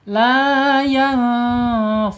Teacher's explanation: Ikhfa hakiki ya harus dibaca samar dan ditahan dua harakat. La yanfauhum ya fa ya asyafatain makhrajnya.